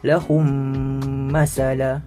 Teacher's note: memasukkan bunyi mim sakinah kepada mim berbaris serta dengung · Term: idgham mislain